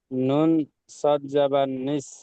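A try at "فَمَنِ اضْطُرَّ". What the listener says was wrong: নুন সদ নেই, নুন জদ আছে, নুন জদ জের।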